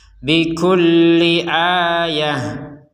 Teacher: huruf ta ini kalau kita berhenti di sini akan terbaca sebagai huruf h